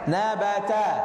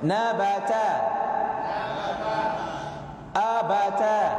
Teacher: Tidak mengalir suara ke langit-langit, kita mengucapkan hurufnya sehingga ia dibaca tipis. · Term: istifal